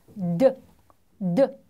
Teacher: 주시면 됩니다 다음 보겠습니다 전치 조음 자 앞 잇몸 소리 그죠 혀끝이 윗니 이빨에 바로 뒤에 있는 잇몸에 닿아서 즉 나는 소리예요